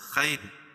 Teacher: را ساکن سے پہلے یا ساکن ہو تو را ساکن ہر حال میں باریک ہوتی ہے